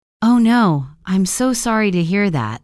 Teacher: Notice how the tone is lower and slower.